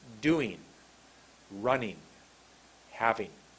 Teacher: When you say ing at the end of words, ing, the sound is not ing, it's een.